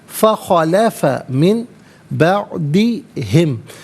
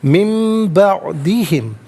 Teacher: نون ساکن کو میم سے چینج کر کے میم کی آواز کو غننے کے ساتھ ادا کیا جائے گا